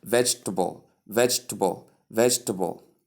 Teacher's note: it's just split into three syllables not four syllables three veg t and bo instead of V gbo.